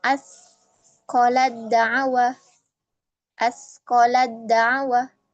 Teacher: huruf ta bertemu dengan dal ya masih satu makhraj tapi berbeda di sebagian sifat